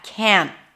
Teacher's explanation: can't always has the full vowel, the as in cat, can't, even though the T is barely noticeable.